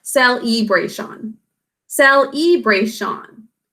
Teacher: The 2nd syllable is unstressed. It's muffled. We should have an E sound there, but it gets muffled because we really pronounce celebration. · It's the bray syllable that ends up getting emphasized. Fingers under your chin to pronounce this as celebration.